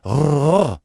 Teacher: c'est un R roulé. Si on a déjà entendu parler espagnol ou italien, c'est exactement ce son-là. La langue vient vibrer juste derrière les dents.